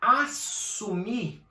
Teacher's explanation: eu não falo o S 2 vezes. Ele só tem um som.